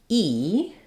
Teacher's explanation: the E sound is made up near the front of my mouth with very little space there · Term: high front vowel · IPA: /i/